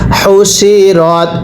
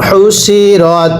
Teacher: হাফিজ হু সিনজের সি রতা জবর রত হুসি রত, একসাথে পড়বেন হুসি রত। এই হা গুলো উচ্চারণ করার সময় গলার মাঝখান থেকে বাতাস বের হবে, সিনটা মোটা করে উচ্চারণ হবে।